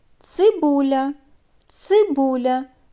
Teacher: так на початку слова це твердий приголосний ц тому позначаємо його однією рискою